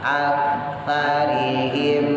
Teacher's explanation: Ujung lidah keluar dikit, berada di gigi atas. Ala aksa sa aktsarihim fahum izhar syafawi jelas fahum la yu'minun.